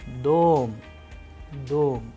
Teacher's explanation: the stress sign which always falls into the vowel for example in the word dom the sound of o is higher than the rest of the letters